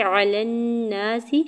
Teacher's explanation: فضل علی الناس، فا کے زبر کو تو ساکن کے ساتھ ملاتے ہوئے پڑھیں گے، لام کے نیچے دو زیر کی تنوین پر اظہار حلقی ہوگا یعنی غنہ یا اخفا نہیں کریں گے۔ علی الناس، لام کی زبر کو نون مشدد کے ساتھ ملاتے ہوئے غنہ کرنا ہے، نون کے اوپر زبر ساتھ الف اٹیچ الف مدہ بھی ہوگا، سین کی زیر کو بغیر کھینچے ہوئے ادا کریں گے۔